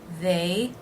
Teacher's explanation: the voiced th sound the a as in say diphthong